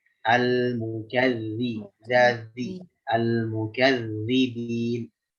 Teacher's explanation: satu lagi zal itu rokhwah, jangan sidah, jangan mukadzibin, mukadzi al mukadzi zazi al mukadzibin.